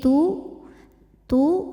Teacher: Ta ini ada angin anginnya barengan sama bunyinya sama suaranya jadi tu tu ada angin jadi bukan tu Bukan juga tapi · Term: huruf Ta